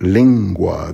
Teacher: the N before the G is pronounced as sort of an NG in anger